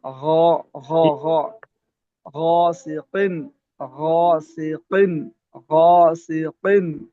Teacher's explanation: ہاں جب غین پڑھے گا نا غین کو پڑھیں گے تو پڑھتے جی ہوئے جی منہ گول نہیں کریں گے